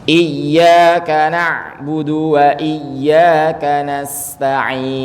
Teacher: Huruf ya ini harus ditasydid, harus ditahan.